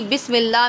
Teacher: پہلے بسم اللہ دیکھیے، بس سین پر سیٹی نکلے گی